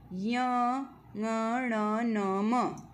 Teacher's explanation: प्रत्येक वर्ग का पांचवा जो वर्ण है उसका उच्चारण स्थान क्या है बेटा? नासिका है। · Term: पंचमाक्षर